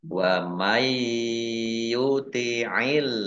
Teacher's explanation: Allahnya dibaca tipis karena harokat di depannya kasroh.